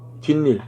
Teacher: 뒷말의 첫 소리 모음 앞에서 니은 소리가 덧나는 것